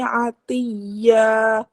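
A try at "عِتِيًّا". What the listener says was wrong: Ni'itiyya, ain baris bawah.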